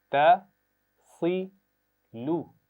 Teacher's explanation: صاد درمیان میں ہے اور اس کو موٹا پڑھنا ہے، لیکن تا اور لام کی آواز کو موٹا نہیں ہونا چاہیے